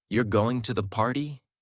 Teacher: The Voice Rises at the end signaling it's a question